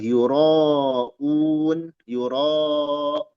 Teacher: Ro itu mad thobi'i. Menghadapi hamzah pada satu kata. Dia panjangnya empat atau lima harakat. Boleh enam kalau dia berhenti. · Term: mad muttasil